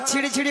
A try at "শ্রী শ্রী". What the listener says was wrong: আরে মাসি ওনার নাম ছিরি ছিরি না বলো শ্রী শ্রী